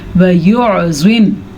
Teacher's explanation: زوا کو پر پڑھنا ہے، اور یہ مد آپ نے ضرور ادا کرنی ہے، لام کو چھوٹا ہی پڑھنا ہے. اگر آپ نے پھر یہاں پہ لام لمبا کیا تو پھر حرام ہو جائے گا، ہاں اور نہ کی غلطی ہو جائے گی.